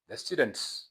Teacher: ምክንያቱም student የሚለው ት ቮይስለስ ሳውንድ ስለሆነ ማለት ነው